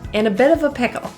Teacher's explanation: I need to get to work. The A is actually pronounced as a schwa, rather than in a or in a, in.